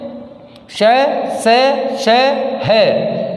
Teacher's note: जब हम वायु छोड़ते हैं तो पार्श्व भाग से इसमें वायु का, श्वास का घर्षण होता है, जिसके कारण इसे ऊष्म व्यंजन कहते हैं।